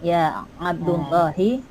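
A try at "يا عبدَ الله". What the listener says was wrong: Ya Abdallahi, bukan ya Abdullah ya. Ya Abdallah. Kenapa ya Abda? Karena dia karena dia apa? Iya, nida mudhaf. Nida mudhaf ya. Munada mudhaf ya. Munada sekaligus mudhaf ya.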